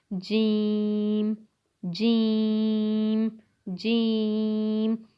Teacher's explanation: जीम का मखरिज जो है वो ये है, ज़ुबान के दरमियान और ऊपर के तालू के दरमियान से अदा होता है।